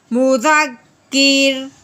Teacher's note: وقف کی صورت میں ہم نے را کو باریک پڑھنا ہے کیونکہ یہ تو ساکن ہو گیا، جس سے پچھلے کو دیکھیں گے پیچھے زیر ہے، اس لیے اس کو کیا کریں گے باریک کریں گے.